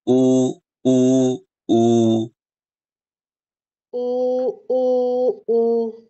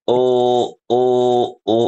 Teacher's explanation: auudunya sudah bagus tapi kurang monyong